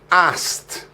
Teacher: we drop the k sound from the past simple or verb to, and it just becomes asked.